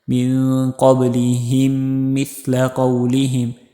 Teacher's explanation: یہاں پہ ادغام کرنا ہے میم ساکنہ کے بعد دوسرا میم ہے، پہلے میم کو دوسرا میم ملا کر پڑھیں گے